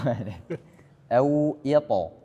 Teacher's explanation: to-nya di sini jangan ada hamas.